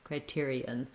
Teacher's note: We still have that bright E sound. And then we have, for the ON, a schwa, sounds like criterion.